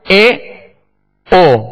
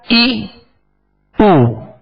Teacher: آپ ہونٹوں کو اگر کامل گول نہیں کریں گے تو یہ پیش مجہول پڑھا جائے گا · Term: مجہول طریقہ